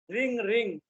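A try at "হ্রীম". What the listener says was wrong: রিং নয়, রিম, রিম।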